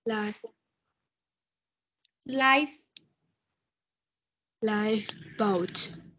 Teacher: khi mà cái cái môi dưới của con nó chạm vào cái hàm răng trên và nó tạo ra một cái chỗ hở, khi con đẩy hơi ra thì nó sẽ thành cái âm.